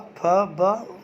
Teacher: हमारे होठ तो आपस में मिल रहे हैं, इसलिए इसको हम लिख देंगे कि ये ओष्ठ वर्ण का उच्चारण स्थान कर रहा है।